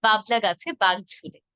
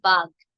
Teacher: বাঘ যেহেতু মহাপ্রাণ জোর দিয়ে